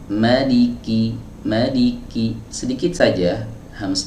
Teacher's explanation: sifat siddah harus lebih dominan dari sifat hams